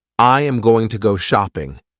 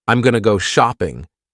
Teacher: I am going to changes to I'm going to. This makes the sentence shorter and faster. Instead of I am going to, you say I'm going to.